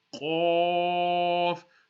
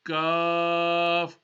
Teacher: Now, the difference between this qaf and this kaf is that this kaf is going to be a thinner sound. The qaf with the dots, the musta'liya, is a thicker sound.